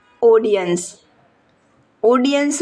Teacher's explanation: ઓડિયન્સ માં ઓ નો ઉચ્ચાર પહોળો છે ઓડિયન્સ નથી જો ઓડિયન્સ ઓડિયન્સ તેથી તે ઊંધી માત્રાથી દર્શાવાય છે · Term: વિવૃત